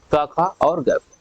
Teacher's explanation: यहाँ पे जीभ के पिछले हिस्से पर, पिछले हिस्से से आवाज आ रही, इसलिए इसको कहते हैं क्या, जिह्वा मूली है।